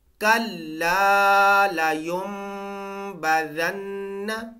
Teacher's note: یہاں پہ میم کی آواز آئے گی، نون کی آواز نہیں آئے گی، میم کی آواز آئے گی۔